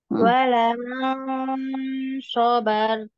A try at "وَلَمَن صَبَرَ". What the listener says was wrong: Jangan syo tapi so ya. Sabar, sabaru, sabaru. Dialirkan.